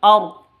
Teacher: Alqamariyah tandanya sukun. Wal ardi rnya ro takhim. tebal